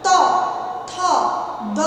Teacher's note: জিহ্বা দন্তকে স্পর্শ করছে, তাই এগুলো হলো দন্ত ধ্বনি। তাহলে এর উচ্চারণ স্থান হচ্ছে দন্ত।